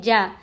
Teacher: جیم زبان کے بیچ کے حصے سے جیم ادا ہوتا ہے. جیم پر زبر ہے نہیں کھینچیں گے.